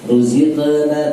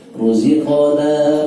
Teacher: Kemudian pada kata ruziqona, qafnya, qaf sifatnya tebal, maka ketika disukun pun dia harus tebal. Tidak boleh ruziqna tapi ruziqo.